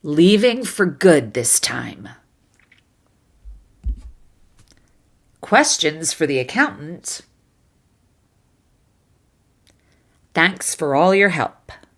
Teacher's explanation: using the unstressed or rushed or reduced version of fur instead of four will make your speech flow more naturally and make you more